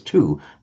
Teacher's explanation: We don't pronounce the w, we pronounce it as two.